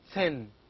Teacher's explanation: the tip of the tongue touches the upper front teeth to produce thin